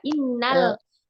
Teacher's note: Innal lam sukunnya yang dibaca jelas. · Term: idhar qamari